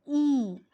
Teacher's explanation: the front of the tongue is raised in the direction of the hard palate to just below closed position